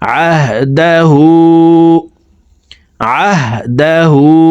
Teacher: হু এখানে 3 আলিফ টান, মদের হারফের উপরে চিকন চিহ্ন, বামে হামজা মধ্যে মুনফাসিল 3 আলিফ টানিয়া পড়িতে হয়। তো এই হাকে ঠোঁট গোল করে 3 আলিফ টানে পড়ব